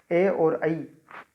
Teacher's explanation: ए और ऐ, इसका उच्चारण स्थान कंठतालु।